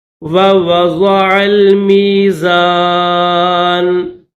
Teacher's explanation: ضاد کو موٹا کر کے پڑھیں گے